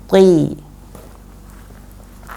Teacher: huruf to dia bukan hamas, artinya anginnya tidak terlalu banyak